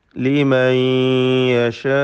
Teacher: ലിമൻ സക്കിനാനൂൻ ശേഷമുള്ള യായിൽ ലയിപ്പിച്ച് മണിക്കണം. ഇദ്ഗാം ബിഗുന്ന. · ഇദ്ഗാം ബിഗുന്ന. യശാഉ അലിഫിന് മദ് മുത്തസിൽ വാജിബ് നൽകി 4-5 ഹറക്കത്തിൻ്റെ അളവിൽ ദീർഘിപ്പിക്കൽ നിർബന്ധമാണ്.